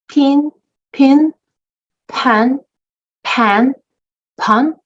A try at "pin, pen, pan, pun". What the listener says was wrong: Yes. And you've got it.